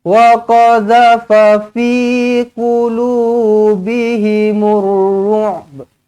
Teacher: wa qadhafa semua pendek, fi baru panjang.